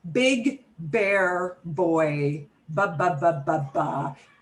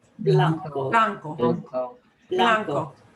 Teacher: But it's never explosive like in English, okay? We have in English a very explosive B.